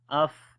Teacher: on the fa again we make hams quality. Af, like the continuation of our breath.